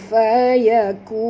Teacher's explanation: Kun fayakun, nun mati bertemu dengan fa, kita kena sembunyikan bunyi nun ini pada kadar separuh ke dalam huruf fa disertai dengung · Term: ikhfa